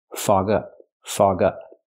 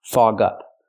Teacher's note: It's a phrasal verb, so you stress both words.